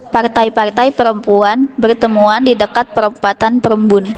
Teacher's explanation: fonem R dibunyikan dengan tekanan berlebih dan pengulangan, membentuk fonetik partai, di mana pada tuturan ini itu terjadi konsonan R ganda di tengah kata.